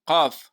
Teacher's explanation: د مرۍ د اخر نه به ادا کوو قاف